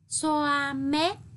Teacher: tiếng xoa có âm sờ, đọc thẳng lưỡi, vần oa tròn môi.